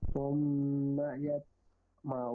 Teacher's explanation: ثم يطمع میم پر شد کی وجہ سے گنہ کیا، تو حروف قلقلہ میں سے ہے اس لیے ہم نے قلقلہ کیا یہاں پہ